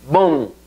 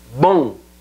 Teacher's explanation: o se nasaliza completamente y la M es casi que se pierde